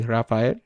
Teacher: the sound is similar to a Spanish R, except that there isn't any trilling or rolling. It's just one touch.